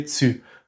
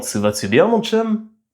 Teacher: C'est d'ailleurs un phénomène similaire qui est arrivé au français du Québec. Aujourd'hui le mot tu est beaucoup prononcé tsu, comme dans tsu va-tu bien mon chum?